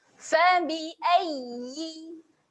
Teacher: jadi kita tahan pada makhraj huruf ya. Okey, angkatkan tengah lidah.